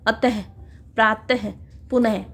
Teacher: विसर्ग का उच्चारण हल्के से ह के समान होता है।